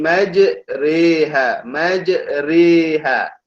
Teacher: huruf ra dibaca dengan nipis kerana dibaca dengan imalah